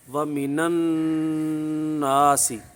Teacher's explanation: اس وقت اس نون کو زبر دے کر آگے والے ساکن سے ملا دیتے ہیں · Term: اجتماع ساکنن علی غیر حد